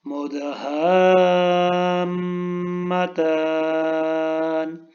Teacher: دال کے اوپر قلقلہ ہے، میم کے اوپر غنہ ہے